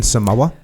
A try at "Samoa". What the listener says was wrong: It's you gotta elongate the A a little bit. It's Samoa.